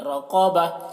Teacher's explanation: رقبہ میں را کو پر پڑھ رہے ہیں اور قاف کو بھی پر پڑھ رہے ہیں